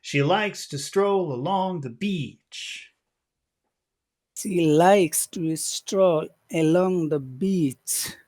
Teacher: it fits our Rhythm perfectly small big small big small big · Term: perfect Rhythm